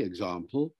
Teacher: you'll use the long a in rp